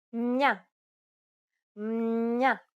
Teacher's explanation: When it comes before an opening diphthong, we notice some nasalization between the two elements. It sounds as if an N sound is between the consonant and the diphthong.